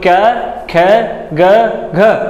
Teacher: कै वर्ग है, उसके सभी वर्णों का उच्चारण स्थान कहाँ से है कंठ से